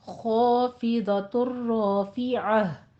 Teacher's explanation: ख़ा भी पुर पढ़ना है, रॉ को भी पुर पढ़ना है और दौत को भी पुर पढ़ना है। और ख़ाफ़िज़तुर में इदग़ाम बिला गुन्ना करना है